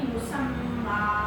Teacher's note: मीम की आवाज़ नाक में नहीं जाती